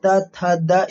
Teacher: द का उच्चारण स्थान दंत हो जाएगा